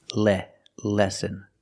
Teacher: the first syllable has a short sound e like 10 and bed